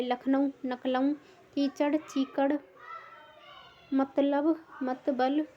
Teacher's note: एक शब्द की विभिन्न ध्वनियों के विपर्य की प्रवृत्ति दक्खनी की एक प्रमुख विशेषता